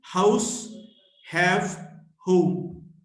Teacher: H, voiceless, glottal fricative, house, have, home.